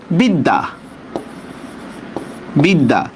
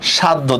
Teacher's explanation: মানে জফলা যে বর্ণের সাথে সেটা 2 বার উচ্চারণ হবে। বরস্কায় বি, দ হসন্ত, দয় আকার, বিদ্যা, নাকি? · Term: জফলার উচ্চারণ দ্বিত্ব